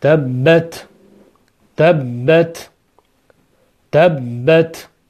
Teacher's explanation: Biz darsda o'tib oldin o'tganmiz, ta undoshi bilan tanishganda, ta undoshi sokin bo'lganida undagi hams degan sifatni ijrosi uchun dimlangan havoni qo'yib yuborish kerak